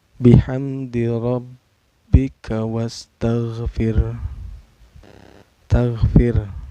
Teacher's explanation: ro-nya dihukumi tarakik ya. Karena ro sukun sebelumnya berbaris kasroh ya. Cara bacanya tipis.